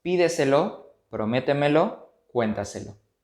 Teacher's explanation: Palabras sobre esdrújulas. Su sílaba tónica se ubica en la posición anterior a la antepenúltima sílaba.